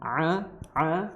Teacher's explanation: ain ya, makhrajnya di tenggorokan pertengahan, a ya, seperti orang tercekek seperti itu.